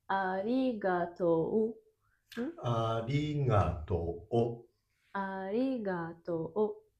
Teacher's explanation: Even if it's written to and u, should be pronounced as to.